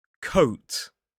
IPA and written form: kəʊt (Coat)